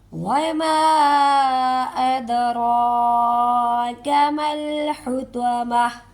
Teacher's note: تا گول ہے، اسے ہم ہا کی آواز نکالیں گے · یہ مد منفصل ہے کہ مد ادھر ہے، حمزہ نیکسٹ ورڈ کے ساتھ ہے، اسے 3 سے 4 کاؤنٹ کھینچ کے ادا کریں گے · را پر کھڑی زبر ہے، اسے بھی ہم 1 الف کے برابر کھینچ کے ادا کریں گے